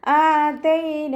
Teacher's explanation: ഹംസക്ക് ശേഷം അലിഫ് മദ് വന്നു, 2 കൗണ്ട് നീട്ടി കൊടുക്കുക.